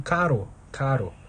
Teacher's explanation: então a língua faz tipo um movimento de chicote contra os alvéolos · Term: vibrantes